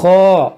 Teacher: یہ خا حروف مستعلیہ ہے اور اس خا کے ساتھ الف مدہ ہے، تو اس کو موٹا بھی کریں گے، کھینچیں گے بھی